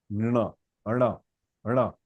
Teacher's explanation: whenever you are pronouncing na, the tip of the tongue is touching your hard palate. टपक करके ऊपर जाके नीचे आता है. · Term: murdhanya